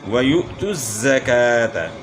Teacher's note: وَيُؤْتُ الزَّكَاةَ، یہاں جو ہے حمزہ ساکن ہے تو یہ حمزہ ساکن میں جھٹکا ہوگا، اور زا کی آواز جو ہے اس میں سیٹی کی مثل آواز پیدا ہوگی، اور کاف کو تھوڑا کھینچنا ہے، کھڑا زبر ہے، اور اگر ہم جیم پہ وقف کریں تو پھر گول تا جو ہے یہ ہاتھ سے تبدیل ہوگی۔